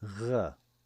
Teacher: Israelis pronounce it like the French R or the German R. Furthermore, the Sephardic Jews will pronounce it rolled, like r.